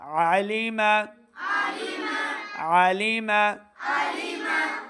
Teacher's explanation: حمزہ کی آواز نہیں آئے، عین زبر ع